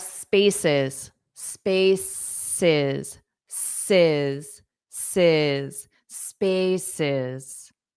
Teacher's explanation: So the syllable stress on the first syllable